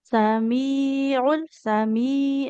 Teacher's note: huruf mimnya panjang jangan ke hidung